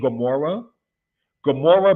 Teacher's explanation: it's not the mute letter Olive in that particular case so it's a gutural kind of G sound